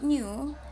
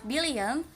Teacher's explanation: When we pronounce new, is our standard n, and the word billionth dentalized. In this means that our tongue is closer to our teeth.